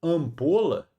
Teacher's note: veja que o m ali, ó, ele só serve para nasalizar o a. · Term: dígrafo vocálico